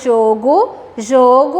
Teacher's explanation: tem aí o timbre da vogal o no singular com o som fechado. E quando eu vou colocar no plural, esse o se transforma em o e fica jogos, né?